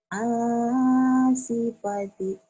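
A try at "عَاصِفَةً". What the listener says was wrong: A-nya panjang. Asifata, asifata gitu ya. Sad. Asifata.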